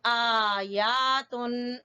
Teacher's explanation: दोनों के ऊपर खड़ी जबर है तो दोनों को बराबर का खींचेंगे, आयातुन। ठीक है, जबर को नहीं खींचना, खड़ी जबर को खींचना है।